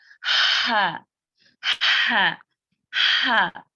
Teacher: हा की आवाज चलती है बगैर किसी रुकावट के